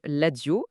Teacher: en lingala, la lettre R subit une mutation et se prononce généralement comme un L. L'exemple de la source, c'est le mot radio qui devient l'adio à l'oral.